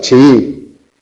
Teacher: Como tenemos un hiato tenemos 2 sílabas, chií. Y la tónica es la segunda sílaba.